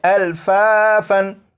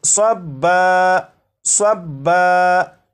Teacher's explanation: تو جب یہاں پر وقف کریں گے تو دو زبر کو الف سے بدل دیں گے، اور یہ جو لفظ ہے الفافن، یہ الفافن نہیں پڑھا جائے گا بلکہ وقف میں یہ پڑھا جائے گا الفافا۔